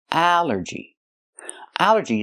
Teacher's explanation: It's three syllables. Allergy. The stress is on the first syllable.